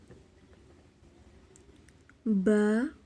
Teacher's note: بند ہونٹوں کے گیلے حصے سے ادا ہوتا ہے۔ ہونٹوں کو بند کرتے ہیں اور ہونٹوں کے گیلے حصے سے ادا ہوتا ہے۔